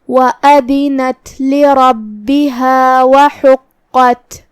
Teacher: حا کی ادائیگی حلق کے درمیان والے حصے سے ہے. قاف کی ادائیگی کا اور اس کی تشدید کا دھیان رہے. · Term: حرف الحا